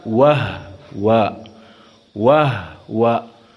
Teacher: maka disukunkan Hnya sehingga wahua dibaca